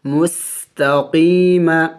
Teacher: میم سین پیش مس، تا زبر تا، قاف یا زیر قی، میم زبر ما، مستقیم۔ سین سیٹی والے حروف میں سے ہے، یعنی منہ سے سیٹی کی آواز نکلنی چاہیے